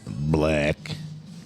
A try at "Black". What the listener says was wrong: Blech. A black. I think you said blech. Like, Like Dracula saying blech.